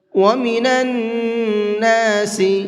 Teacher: نون کے اوپر تشدید ہے تو یہاں پر غنہ کر کے پڑھیں گے، ناک میں آواز کو روک کر کے پڑھنے کو غنہ کہتے ہیں